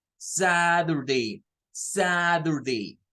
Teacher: cuando está en medio de dos vocales se usa el sonido de una D en vez de una t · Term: alófono